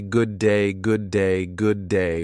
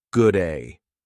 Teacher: we don't say good day, good day, good day with clear separation. Instead, we say good-ay. We drop the D.